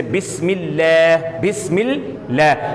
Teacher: اب بسم اللہ کے لام جو ہے اس کو ہم موٹا نہیں پڑھیں گے کیونکہ پہلا حرف مکسور ہے